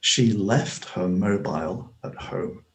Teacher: i pronounce the t on the end quite audibly